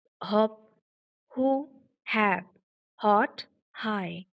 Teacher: while uttering the sound, there is no vibration, right? And that's why the sound is voiceless.